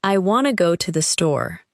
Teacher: the speaker is more likely to stress want, go, and store. The two uses of to become much weaker.